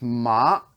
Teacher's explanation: You're ramping up, so it's ma. You're starting off the ground level, and then you're ramping up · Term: second tone